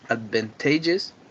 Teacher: It has 4 syllables, and its stress is on the T, on the third syllable.